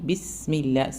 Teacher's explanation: സീൻറെ അടുത്ത് ഒരു സുക്കൂന് നമ്മൾ സമയം കൊടുത്തു വേണം പറയാൻ